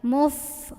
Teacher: Lagi-lagi hati-hati dengan fa, ini keluarin anginnya, ujung lidah, ujung gigi atas ya, ujung gigi seri atas ketemu bibir bawah bagian dalam. Muf, huruf F ada anginnya.